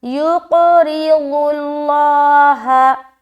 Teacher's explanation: دیکھیے یہ جو دونوں لفظ ہے، قاف کو موٹا رکھیں گے اور قلقلہ بھی کرنا ہے، را کو باریک رکھنا ہے کیونکہ اس کے نیچے زیر آ گیا، ضاد کو موٹا ادا کرتے ہوئے لام میں ملائیں گے، پھر لام کو بھی موٹا پڑھیں گے، کیوں؟